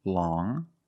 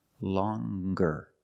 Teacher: First, we see long with the sound which is a nasal sound. Long. But then you have longer, where we have the hard g sound. Longer. With a nasal sound, plus the hard g.